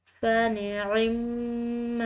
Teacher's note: میم مشدد ہے، مشدد میم پر غنہ کریں گے